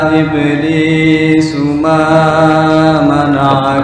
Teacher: Panjangan ma hanya dua harokat, nggak boleh lebih.